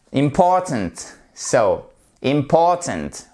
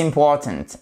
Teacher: Vous avez votre apostrophe ici, ce qui signifie que on a l'accent tonique sur la deuxième syllabe